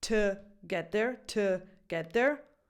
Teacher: If you're going slowly, you may have a T and a schwa sound